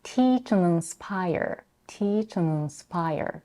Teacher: She drops the D in and reduces the vowel to a schwa. This allows the two verbs to shine and sound more stressed.